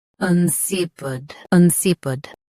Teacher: Both US and UK have the same pronunciation of this word. Stress si. Keep un soft and end with pid.